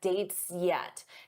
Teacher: Notice how that S blends into the Y for yet.